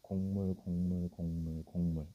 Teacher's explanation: 이응 미음이 되는 거죠. 그럼 결론은 앞에 있는 기억이 이응으로 바뀐 거야.